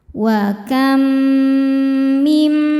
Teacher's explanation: Cara bacanya mim pertama dimasukkan ke mim kedua disertai bunyi dengung. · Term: idgham mimi